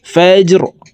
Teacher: ফা জিম জবর ফাজে, র জির রি, ফাজরি, র কে ওয়াকফের ক্ষেত্রে সাকিন করে ফেলবো